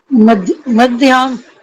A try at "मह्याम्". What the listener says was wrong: ह है ना, द क्यों लगा उसमें? इसमें तो ह लगा, महयाम। हाँ ह आधा और याम, पृथिव्याम या पृथिव्याम करो।